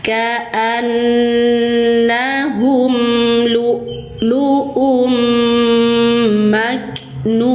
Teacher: Kaf sifatnya syiddah. Tekan di makhrajnya dulu setelah ngelepas makhraj kaf baru diikuti percikan nafas atau hamas.